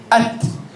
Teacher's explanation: the tip of the tongue is behind the two front teeth. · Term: ta